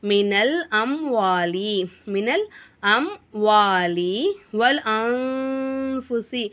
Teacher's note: நூனே சாக்கினை குன்னா செஞ்சு ஓதணும்